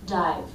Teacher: These ending consonants are so weak that we take the voice out of them, and they end up sounding like weak, unvoiced sounds. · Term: weak, unvoiced consonant